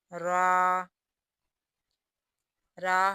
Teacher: آگے را، را، را حروف طرفیہ یا زلقیہ میں شامل ہے، یعنی وہ حروف جو زبان کے کنارے سے نکلتے ہیں، تو اس کو ادا اس طرح کریں گے، را۔